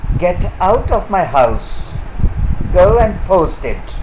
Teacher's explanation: Order, commands are spoken with a falling tone.